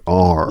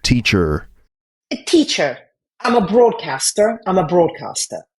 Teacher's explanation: It was just a slightly, as you said, retroflexive R.